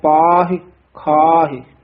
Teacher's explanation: ਇਹ ਖਾਹੇ ਪਾਹੇ ਲਾਵਾਂ ਨਹੀਂ ਲਾਉਣੀਆਂ ਸਿਹਾਰੀ ਬੋਲਣੀ ਹੈ